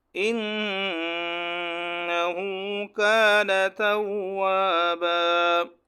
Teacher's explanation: نون مشدد ہے، ہم نے پڑھا ہے کہ نون مشدد پر ہمیشہ ایک الف کے برابر غنہ واجب ہے